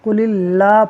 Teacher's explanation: یہ لام اللہ اسم جلالت کا ہے اور اس سے پہلے زیر ہے تو ہم اسے باریک پڑھیں گے، یعنی قل اللہ پڑھیں گے، قل اللہ نہیں پڑھیں گے۔